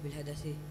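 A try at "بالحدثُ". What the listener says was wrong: Kok dibaca bil hadasi? Yang ngajar itu ustadznya siapa namanya? Ufron. Ustadz Ufron. Salah Ustadz. Yang bener bil hadasu. Bil hadasu yang bener.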